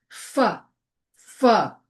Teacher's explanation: fricatives. Air flows through a narrow space um causing turbulence like fu and v. You can feel the air.